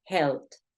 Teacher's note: Esta ed que te estoy mencionando aquí va a sonar como un golpe de T. Helped, helped.